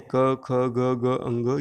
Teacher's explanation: क वर्ग की जितने वर्ण हैं क, ख, ग, ग, अंग, ये सब कंठ से निकल रहा है